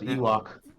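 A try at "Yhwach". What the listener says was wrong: Nah, dude, you gotta pronounce the Y. Y is not silent. Yuak.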